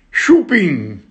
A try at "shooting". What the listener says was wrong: Shooting. No, shu, così shu. Di shooting. No, ping come ping pong, invece shooting, no shooting ping.